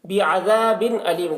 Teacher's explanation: بعذاب علیم ذال کو باریک پڑھیں گے، اور یہاں پر تنوین کے بعد حروف حلقی میں سے حمزہ ہے، یہاں پر اظہار ہوگا، تنوین کو ظاہر کر کے جلد پڑھیں گے